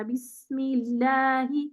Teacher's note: سین کی آواز زیادہ دیر چلتی ہے, توسط سے زیادہ دیر چلتی ہے, تو اس میں سین کو زیادہ ٹائم دینا پڑتا ہے. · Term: رخاوہ